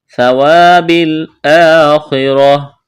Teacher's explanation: وقف کریں گے، گول تا کو ہا سے تبدیل کرنا ہے